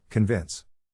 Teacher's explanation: the accent is in the second syllable, corresponding to vins.